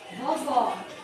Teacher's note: a última sílaba é mais forte Então ela é uma oxítona uma oxítona que terminou em ou então